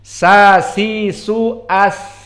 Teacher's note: Atroful lisan bertemu dengan antara as-sanaya ulya wa sanaya as-sufla